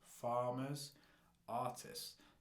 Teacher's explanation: okay that r sound in the beginning and the fact that they've got two syllables and the stress is on the first syllable